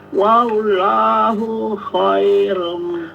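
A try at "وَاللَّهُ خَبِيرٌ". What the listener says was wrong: Khabir. Wallahu khabir. Jangan khaibir tapi khabir langsung.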